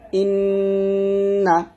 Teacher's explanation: যেমন এখানে ইন্না, হামজাকে নুনকে ধরছে, ইন বলে আমি একটা শব্দ করছি, এটা আমি নাকের থেকে নিয়ে আসছি, এটাই মূলত গুণনা, ইন্না।